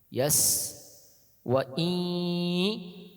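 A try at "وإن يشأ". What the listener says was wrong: Jangan wa i, tak ada masuk ke hidungnya. Dia harus masuk ke rongga hidung. Wa iyasha. Ada unsur nun sukun. Wa iyasha. Jangan wa i. Tak ada masuk nun itu. Wa i. Cuma menyamarkan saja.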